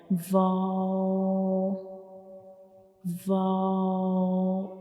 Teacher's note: Without touching the both lips completely, only we will make a circle to pronounce vow, like vow, vow.